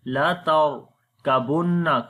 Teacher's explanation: This ra we read in heavy sound because ra has a sukun sign and there is fatha on the before letter.